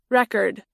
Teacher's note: avec l'accent tonique sur la première syllabe